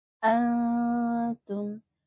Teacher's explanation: nun sukun bertemu huruf Ta ini dibacanya samar ya A tidak dibaca jelas karena ini merupakan ikhfa ikhfa n